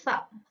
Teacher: tsa atau fa itu kan tidak terjadi letupan ya, tetapi terjadi geseran karena ee suaranya itu hanya tertahan ee sebagian aja gitu.